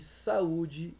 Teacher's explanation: o au é separado tá em sílabas diferentes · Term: hiato